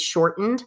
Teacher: you're not going to pronounce the ED as a separate syllable. All of this is done for the sake of meter.